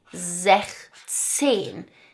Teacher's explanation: do notice that the S here is being dropped from sechs right we normally have an S there it's being dropped for sechzehn